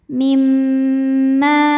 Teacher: Mim kedua dihukumi dengan gunnah musyaddadah karena mim bertasydid. Cara bacanya dengung, bunyi m tahan sampai ada suara masuk hidung. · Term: ghunah musyaddadah